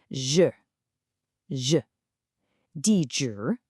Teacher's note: This is what we call a retroflex sound, which just means your tongue is curled back.